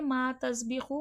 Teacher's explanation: ما میں الف مدہ ہے، الف سے پہلے زبر ہے، تھوڑا کھینچ کے پڑھا جائے گا